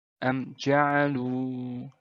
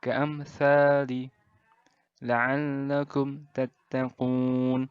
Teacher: Ingat ya, mim sukun atau mim mati bertemu dengan semua huruf hijaiyah kecuali mim dan ba. Izhar syafawi ini dibaca dengan jelas tanpa dengung, seperti izhar biasanya.